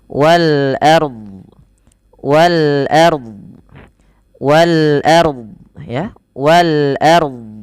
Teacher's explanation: Wal ard ya, wal ard. Nah, harus ada huruf dotnya. Bukan hanya sekedar wal ar. · Nah, tapi di sini juga bukan wal ar, tapi dia ro-nya dibaca dengan tebal karena ro sukun didahului dengan fathah